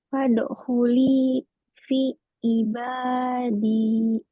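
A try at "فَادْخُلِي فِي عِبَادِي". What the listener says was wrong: Kenapa tuh potong-potong? Fadkhuli fi ibadi.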